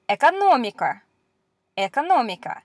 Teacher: this is the hard version because it doesn't have the little Y sound in front